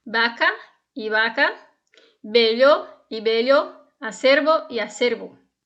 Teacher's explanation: Então, no espanhol, o V ele é pronunciado com o som do B, do português.